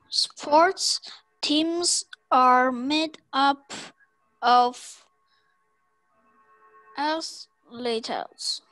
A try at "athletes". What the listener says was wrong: Athletes? Athletes? Remember, the E-E only makes one sound. Athlete.